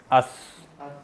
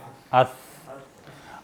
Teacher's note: और अब साथ इस बात को जहन में भी ले आएं कि आपकी ज़बान कहाँ पर लग रही है। अस, ज़बान को थोड़ा सा बाहर निकालेंगे और बाहर निकाल कर आप उसको ज़बान, ये दांतों की जो अगले दो दांत हैं उसकी टिप पर लगाएंगे, उसके बिल्कुल बाहर वाले किनारे पर नीचे लगाएंगे।